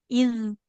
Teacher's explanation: Sedikit di huruf dal sukunnya harus lebih mengalir